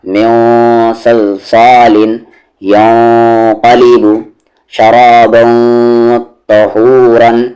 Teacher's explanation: جب تنوین یا نون ساکن کے بعد حروف مستعلیہ یعنی ہیوی لیٹر آئیں تو وہاں پر اخفاء جو ہوگا وہ اور زیادہ ہیوی ہوگا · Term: اخفاء ہیوی